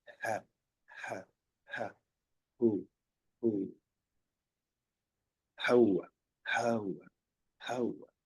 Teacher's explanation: Y hay una tercera que es, le llaman aspirada, donde simplemente el aire pasa de los pulmones y prácticamente no se articula